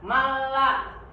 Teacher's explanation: dibacanya tidak dengung, tapi sama-sama idgham, sama-sama nunnya itu dimasukkan, tidak dibaca. Ya, malla. Nah, itu jadi tidak dibaca malla, tapi dibaca malla. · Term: idgham bila guna